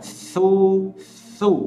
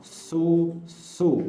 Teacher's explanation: Nah, tetapi ketika pengucapan huruf sa yang berharokat dhamma tidak boleh diucapkan terlalu berlebihan ataupun takhalluf. Contohnya, penyebutan huruf sa yang berharokat dhamma memang betul dari rahang tipis, tetapi tidak boleh terlalu ditarik.